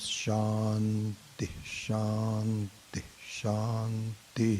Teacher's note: in the end, there is a pronunciation of Visarga, which is an aspiration